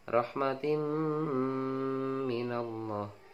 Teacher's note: mim tasjid itu adalah idgham diguna yang harus dibaca dengung